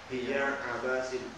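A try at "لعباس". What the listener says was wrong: Ada linya. Ada lamnya kan? Ba-nya itu ada tasydid.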